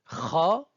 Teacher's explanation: se prononce au niveau du fond de la bouche du haut de la gorge au niveau du palemou elle a le même point d'articulation que · Donc, la septième lettre de l'alphabet kha, l'équivalent de la jota de l'espagnol, se prononce au niveau du fond de la bouche, du haut de la gorge, au niveau du palais mou.